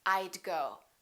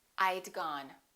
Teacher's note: let's practice contracting the word would I would sounds like I'd I would and I had sound exactly the same when they're contracted they both sound like I'd